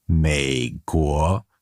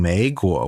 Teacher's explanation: But for a long time, I was actually saying 美 国. So instead of saying third tone, second tone, I was actually saying second tone, third tone.